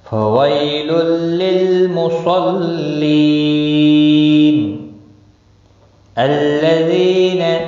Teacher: ذی یا مدہ ہے، ایک الف کے برابر کھینچ کر پڑھیں گے